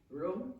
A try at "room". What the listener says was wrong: No, you pronounced it whom. Okay, roommate. Roommate.